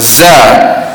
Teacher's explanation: Huruf zai, adik-beradik dia juga sifatnya jahar, tidak ada angin. Adapun kita sebut za, suara kita nyaring dan kita tak tolak angin itu keluar, dan tidak ada hembusan pada huruf zai.